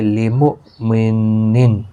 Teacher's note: وما ما الف مدہ ہے، کا الف مدہ ہے، دونوں کو ایک ایک الف کی مقدار کے برابر کھینچ کر پڑھیں گے۔ لمؤمن، حمزہ ساکن کو جھٹکے کے ساتھ پڑھیں گے